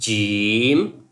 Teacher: When you say jim, it's a kind of whistle sound but not complete whistle sound.